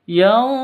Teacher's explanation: Nun mati bertemu dengan za. Dengan za. Cara bacanya samar didengungkan, siap-siap ke huruf za-nya.